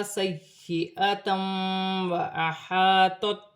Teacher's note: تنوین میں غنہ بھی کیا جائے گا، ملا کر بھی پڑھا جائے گا